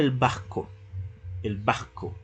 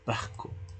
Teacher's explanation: sustituyó la R por ese sonido de la J sorda